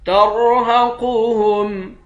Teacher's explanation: را اور قاف دونوں کو موٹا پڑھیں گے